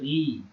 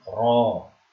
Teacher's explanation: tarqiq tipis, tafkhim cara membaca tebal, tarqiq itu ri, kalau tafkhim ro